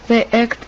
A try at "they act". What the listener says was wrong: When she says they act, it almost sounded like they act with a short E instead of a short A. So vowel differences can be important in sounding native or not.